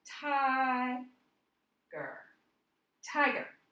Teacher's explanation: The stress is on the first syllable of this word.